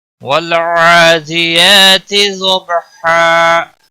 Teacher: لام کو ہلانا نہیں، اس پر قلقلہ نہیں ہونا چاہیے۔ عین کے اوپر کھڑی زبر ہے، 1 الف کے برابر کھینچ کر پڑھیں گے۔ · عین کے اوپر کھڑی زبر ہے، 1 الف کے برابر کھینچ کر پڑھیں گے۔ دی کو کھینچنا نہیں، یا کے اوپر بھی کھڑی زبر ہے، 1 الف کے برابر کھینچ کر پڑھیں گے۔